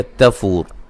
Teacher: تا کو باریک. فو و مدہ ہے. وقفاً وصلاً را کو موٹا ہی پڑھیں گے